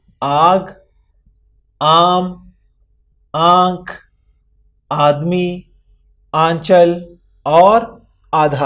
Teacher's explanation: مد سے الف کی آواز تقریباً دگنی یعنی 2 گنا ہو جاتی ہے